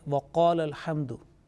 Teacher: when we are joining with the next word, combining the two words in one in recitation, then this qala alif is dropped